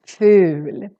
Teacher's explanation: here we have just one consonant so the u becomes really really long